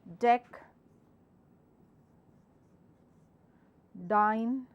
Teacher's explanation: all has your d sound with a heavy vibration